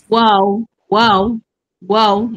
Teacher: wau di dua bibir muncung dan dibulatkan